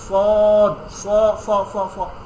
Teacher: কিন্তু যখন আপনি সদ বলবেন, সদ স স স স, আপনার জিব্বাটাকে এরকম ইয়ে করে ফেলবেন, বাটির মতো করে ফেলবেন